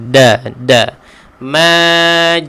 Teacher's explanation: Huruf dal ni kena apa? Hujung lidah kita ditekankan ke belakang gigi kacip